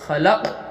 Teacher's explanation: خلق، خا زبر خا، لام کا زبر لق، لق میں قلقلہ ہو رہا، پڑھتے وقت آواز لوٹیں گی